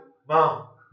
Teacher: मा कहा से निकलता है मा नासिका से निकलता है तो कहा अनुस्वार है उसका स्थान उच्चारण स्थान क्या है नासिका